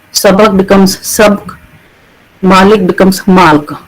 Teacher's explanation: they actually delete the vowel in the word medial position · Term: syncope